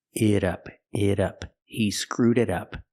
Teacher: The T in it is pronounced like a fast D.